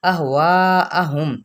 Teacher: اہواہم یہاں پہ چار حرکات کے برابر کھینچیں گے